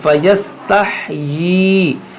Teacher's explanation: یہاں پر کھڑی زیر ہے، اس کو بھی کھینچیں گے ایک الف کے برابر